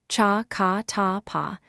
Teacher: The example is cha said with a puff